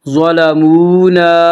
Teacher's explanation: ظلمونا، واو مدہ، واو مدہ وہ واو جو ساکن ہو اس سے پہلے پیش ہو، واو مدہ کو ایک الف کے برابر کھینچ کر پڑھیں گے